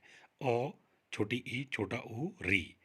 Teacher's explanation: जिन स्वरों के उच्चारण में सबसे कम समय लगता है, या यूं कह लीजिए एक मात्रा काल लगता है, तो उन्हें हम ह्रस्व स्वर कहते हैं